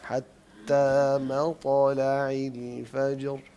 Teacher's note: طا پہ قلقلہ کرنا ہے، اور طا کافی موٹا بھی ہے اور اس کا قلقلہ بھی ہوگا